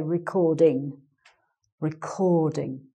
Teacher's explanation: it's the cord bit that you stress